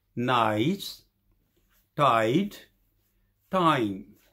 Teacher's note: this diphthong begins with an open vowel which is between front and back. It is quite similar to the A sound of the words, for example, bun and cut. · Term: diphthong I